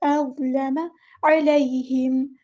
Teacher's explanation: عین کو مستحلق یعنی مڈل تھروٹ سے ادا کرنا ہے